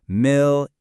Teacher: pay close attention to the stress on that first syllable